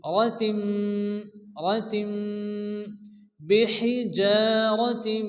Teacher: বিহিজারাতিন, এখানে কিন্তু রাতিম গুণ হবে কারণ তানবিনের পরে কি আসছে মিম আসছে, তো তানবিন বা নুন সাকিনের পরে যদি কি আসে মিম আসে তো এখানে কি হবে ইদগামে বা গুন্না, এখানে একাধিক গুণ্য করে পড়তে হবে